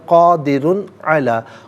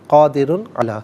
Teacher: قادرن میں یہاں پر را پر دو پیش کی تنوین ہے، اس کے بعد حرف علقی عین ہے نا، تو قادرن میں را پر دو پیش کی تنوین میں غنہ نہیں کریں گے، اظہار ہوگا